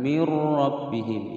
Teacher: dengan huruf ra dimasukkan tanpa didengungkan mir rabbihim ya masuk tanpa dengung. Hukum bacaan idgham bila ghunnah rabbi ba-nya bertasydid ditekan dan dibaca pendek mir rabbihim.